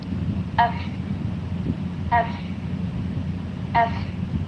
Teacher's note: my upper teeth touching or hitting my lower lip.